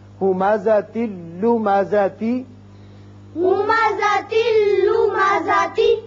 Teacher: یہاں بھی ادغام بغیر غنہ ہوگا، تا کے نیچے ایک زیر پڑا جائے گا اور یہ لام سے ملے گا، نون کی آواز نہیں آئے گی